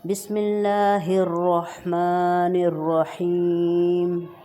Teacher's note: را ہیں دو رحمن میں اور رحیم میں دونوں کو بولڈ پڑھا جائے گا